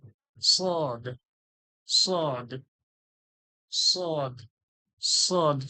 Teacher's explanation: সদ সদ সদ সদ সদটা কিভাবে ঠোঁটের মাঝখান থেকে হালকা ঠোঁটটা ঠোঁটের মাঝখান থেকে হালকা সিটির মত হালকা সুরালো